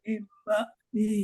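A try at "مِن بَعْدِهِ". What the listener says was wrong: Di situ panjang Pak.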